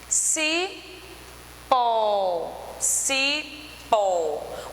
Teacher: O pó tem uma tonicidade maior e é acentuado porque terminou em O. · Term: oxítona